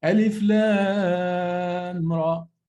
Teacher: I don't merge the meme of lam to the ra. It's not merged. · There is no possibility actually of merging meme and ra. It's not possible because they happen in two parts of the mouth. Meme is bilabial, and ra is, there is a palate behind the teeth, ra. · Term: idhar